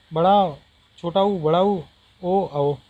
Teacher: वे स्वर जिनके उच्चारण में जीभ का पिछला भाग सक्रिय होता है उन्हें क्या कहते हैं? पश्च स्वर कहलाते हैं।